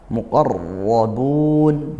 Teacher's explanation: qofnya tebal rnya juga tebal karena fathah.